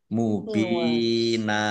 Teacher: Fathah tanwin alif karena wakof dibaca fathah dan panjang 2 harokat, namanya mat iwad